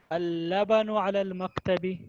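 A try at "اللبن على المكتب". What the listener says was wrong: माशाल्लाह, अल-लबनु अलल मक्तबी।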